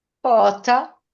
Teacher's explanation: Questo con la O chiusa, adesso con la O aperta